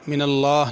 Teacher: لفظ اللہ کا لام پر کرنا ہے